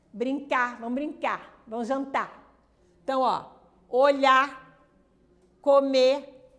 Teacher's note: A apócope da consoante R na terminação dos verbos no infinitivo.